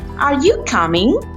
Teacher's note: A rising tone simply means that your voice goes up at the end of a phrase. You start at a low or medium pitch and then your voice rises like this. · See how my voice goes up at the end? That's a rise.